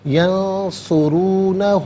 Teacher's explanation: را پر پیش را کو پر کر کے پڑھیں گے